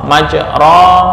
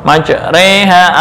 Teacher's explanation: fathah kepada ya ya imalah ro maj ro dibaca maj re yang asalnya fathah ya dibaca antara fathah dengan kasrah